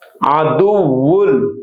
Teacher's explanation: বেলাগুন্না হরফের তাসদীদ দিয়ে পড়ছি, এজন্য নুন সাকিনটা পড়ে গেছে। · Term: ইদগামে বেলাগুন্না